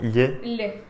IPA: ʎ